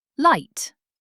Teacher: Tongue touches alveolar ridge.